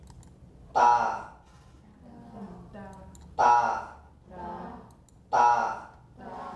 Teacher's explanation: It's not like in French or in some languages when we have a little like 20 millisecond VOT. This sounds like it's near 0. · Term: Voiceless unaspirated